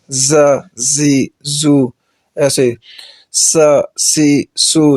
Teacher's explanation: اس کے بعد یہ سیٹی والے حروف ہیں، 3 حروف سیٹی والے ہیں، ز، سین اور صاد، تو ان پر ہر حالت میں سیٹی کی آواز آئے گی، جب بھی ان کو پڑھیں گے تو سیٹی کے ساتھ پڑھیں گے۔